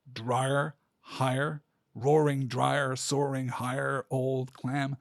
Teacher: we are collapsing that last syllable on drier and higher